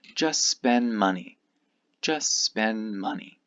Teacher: this T and this D both disappear.